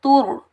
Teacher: تا کے اوپر پیش، آگے را ساکن ہے، تا کو ہم را کے ساتھ ملائیں گے اور را کو پور پڑھیں گے، موٹا پڑھیں گے کیونکہ را حروف مستعلہ میں سے ہے، را موٹا حرف ہے تو را کو ہم موٹا پڑھیں گے.